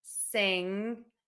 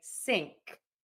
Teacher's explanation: they'll have that devoicing on that G and they will make that the K sound